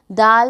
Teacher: خا، دال، دال کو ہم جیم کے برابر کھینچ کر پڑھیں گے، دال، دال کا اور تا سیم جگہ سے ادا کیا جائے گا۔ دال کو بھی ادا کرتے وقت زبان کی نوک کو اوپر کے سامنے والے دو دانتوں کی جڑ سے لگائیں گے تو حرف دال ادا کیا جائے گا